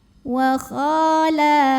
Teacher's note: Maka kita bunyikan panjang kha-nya 2 harokat. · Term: fathah panjang